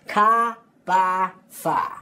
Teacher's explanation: the Boston accent is definitely non Ric we're going to drop those final RS